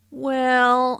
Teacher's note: notice how the vowel is drawn out